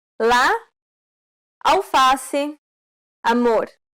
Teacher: This vowel sound is considered an open A sound because the jaw is low